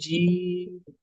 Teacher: جیم ناک میں آواز نہیں لے کے جانی